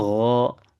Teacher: Ketika baca gho turunkan lagi. Agak nurun. Jangan sampai dekat dengan huruf kho. Turunin lagi biar tidak sama.